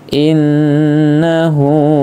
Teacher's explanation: nun tasdid gunnah ditahan 2 harokat atau 2 ketukan.